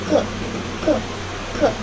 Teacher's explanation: Jarak antara ujung lidah dan punggung gigi lebih jauh. Aliran udara yang dikeluarkan dari rongga mulut lebih kuat sehingga menghasilkan bunyi aspirasi atau bunyi yang disertai dengan udara. · bunyi dorsovelar yang melibatkan daun lidah sebagai artikulator aktifnya dan langit-langit lunak sebagai artikulator pasifnya. Diucapkan dengan posisi badan lidah ditarik ke belakang, akar lidah diangkat menuju pembatasan langit-langit keras dan langit-langit lunak.